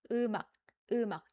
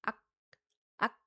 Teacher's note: You don't hear anything after ak ak. It's not ng, it's not k, it's just ak ak. Sound stopping, okay? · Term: stopping sound